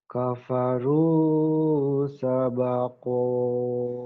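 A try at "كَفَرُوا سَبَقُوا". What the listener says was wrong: Sabaku, bukan sembako. Sabaku. Bukan sabako, sabaku. Kan domau. Kalau patah iya sabako. Sabaku, ayo.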